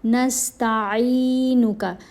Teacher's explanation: عین کو کھینچ کر پڑھنا ہے، عین کے نیچے زیر ہے، ساتھ یا ساکن ہے